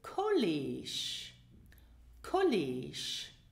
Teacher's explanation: So we have the two vowels E, which is pronounced E, they are long E, and the final G is not pronounced G, it is pronounced Sh